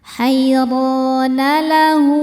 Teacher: Cara bacanya ha ini boleh panjang seperti mad jaiz. Boleh empat, boleh lima harakat.